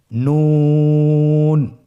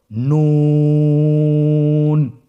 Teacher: নুন হরফটির উচ্চারণ স্থান হচ্ছে জিহ্বার আগা তার বরাবর উপরে তালুর সঙ্গে লাগিয়ে উচ্চারিত হয়।